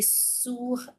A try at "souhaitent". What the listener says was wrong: সোয়েট, not সোয়াট, সোয়েট হবে, হ্যাঁ, হ্যাঁ, এই সব সাইলেন্ট। সোয়েট, সোয়েট।